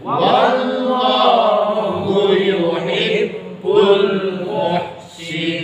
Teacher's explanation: Wallah itu tafkhim. Wallah tebel. Kalau bilah tipis tarqiq.